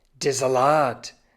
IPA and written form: deːɐ̯ zaˈlaːt (der Salat)